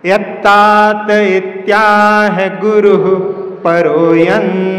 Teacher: गुरु के बाद में विसर्ग है तो विसर्ग विसर्जनम, वहां पर श्वास को छोड़ दो।